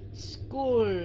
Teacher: cuối cùng là âm L phải cong lưỡi School không phải chưa đúng cong lưỡi lên phía sau đi